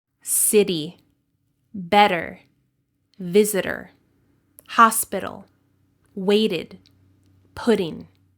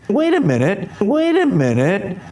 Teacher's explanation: In linguistics, this is called a flap sound. So your tongue touches the top of your mouth very quickly and then comes back down.